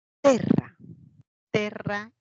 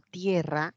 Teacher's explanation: Y al momento de evolucionar, terra pasa como tierra. La E ahora en el castellano suena como IE, tierra. Se dio un diptongo de lo que era E, pasa como IE. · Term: diptongación